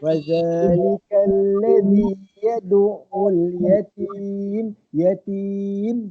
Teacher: wakafkan tu yatim, bunyikan tutup mulut mim tu sebab ujung dia mim kan.